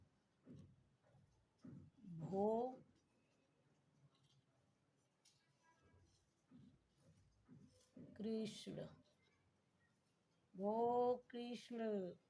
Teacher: प्लुत स्वर में हम दीर्घ स्वर की अपेक्षा हम 3 गुना समय का प्रयोग करते हैं